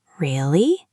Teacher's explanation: If you say really with a high low high pitch, really, it sounds sarcastic.